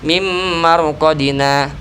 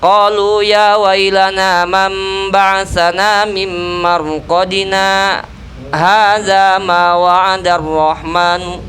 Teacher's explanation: Harusnya berhenti sejenak tanpa bernapas gitu. Langsung melanjutkan meneruskan bacaan lagi. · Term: saktah